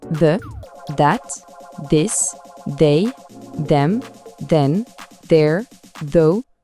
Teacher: Et attention, petite subtilité, parce que sinon ce serait trop simple, il y a en fait 2 sons TH. Le premier est sonore, il vibre, comme dans that ou them, on doit sentir cette vibration dans la gorge.